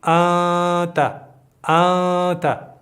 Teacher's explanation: دا شپږ حروف هم نشته او لام او را هم نشته. نو دلته به مونږ دغه نون د خپل ځینه نه ادا کوو، بلکې له پزې نه به یو غږ راباسو چې هغه ته غنه وایي